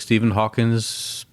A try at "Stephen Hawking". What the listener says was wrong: It's not Hawkins. It's Hawking. Stephen Hawking. Not Hawkins.